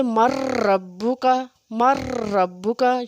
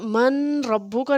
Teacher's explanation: اصطلاحی تجوید میں کیا ہے کہ ایک ساکن حرف کو دوسرے متحرک یعنی کہ حرکات والے حرف کے ساتھ اس طرح ملانا کہ دونوں حروف ایک مشدد شد والا حرف پڑھا جائے، جیسے مر ربو کا، مر ربو کا، یہ دیکھیں نون ساکن کے بعد را حروف جر معلوم میں سے آ گیا ہے، اس لیے ہم نے اس کے اوپر غنہ نہیں کرنا۔ من ربو کا نہیں پڑھیں گے، من ربو کا پڑھیں گے تو یہ غلط ہو جائے گا، پڑھیں گے مر ربو کا۔ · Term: ادغام